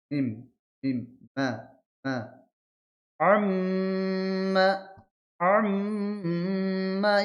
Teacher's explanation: মিম উচ্চারণ করার সময় কি হবে? ২ ঠোঁটের শুকনা অংশ মিলিত হবে।